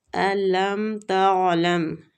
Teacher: عین ساکن ہے اس لیے ہم حلق میں اس کو لے کے جائیں گے، ٹھیک ہے؟ حلق سے نکلتا ہے، وسط الحلق مطلب حلق کا درمیانی حصہ۔